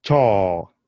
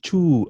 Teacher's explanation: Then we have the letter O, the vowel O, which is ah. Not O, but ah. Just like the way you say off